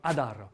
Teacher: le petit r on va gentiment le rouler